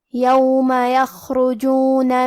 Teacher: خاء کی ادائیگی حلق کے اوپر والے حصے سے ہے. خاء حروف تفخیم میں سے ہے، لہذا ہمیں یہ حرف کو بھاری آواز میں پڑھنا ہے.